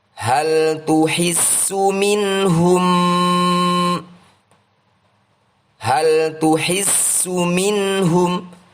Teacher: Nun sukun diikuti oleh ha. Ini adalah pembacaan Izhar Halqi. Bacalah dengan jelas tanpa nasalisasi.